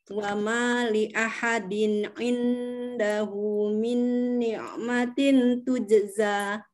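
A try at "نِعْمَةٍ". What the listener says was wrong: Nah, ini juga jangan tin. Huruf N-nya samar-samar. Lidahnya, ujung lidah siap-siap digusi atau di pangkal gigi seri bagian atas. Siap-siap aja, jangan nempel. Ni'matin gitu.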